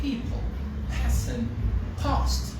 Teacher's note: the three sounds they are aspirated when they are stressed and also at the initial position · In words like people, person, past, it's aspirated.